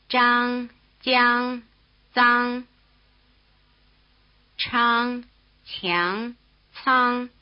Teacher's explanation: 张 江 张 昌 强 仓 These are affricate consonants. They start with the tongue touching the roof of the mouth and continue with the tongue close to the roof of the mouth, so that there's an explosion with a lot of friction. Just what position the tongue is in is different for each row.